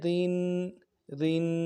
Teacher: تنوین ہے غنہ کریں گے اور باریک کریں گے